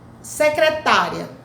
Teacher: Observe que o I e o A, eles ficam na mesma sílaba. Então, o I vem antes, secretária, o I vem antes e a vogal depois. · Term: ditongo